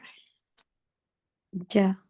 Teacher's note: Jangan ca, jangan terlalu depan. Ujung lidah, perhatikan ujung lidahnya ya.